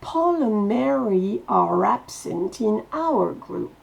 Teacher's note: Il y a une liaison entre le are et absent qui fait que le E de are ne se prononcera pas.